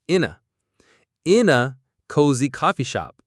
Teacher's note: We don't say in a cozy, we connect them. The in and a merge. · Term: linking